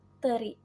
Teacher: Nah, dalam praktiknya terdapat tiga bunyi, yaitu ada apikodental ee yaitu gabungan antara ujung lidah dengan gigi atas seperti ketika kita mengucapkan huruf T. Nah, dari kata teri ketika kita mengucapkan huruf T itu gigi atas dan ujung lidah itu bersentuhan seperti T.